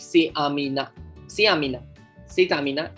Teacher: Here we'll pronounce T because Amina starts with vowel. Otherwise, this is pronounced as say.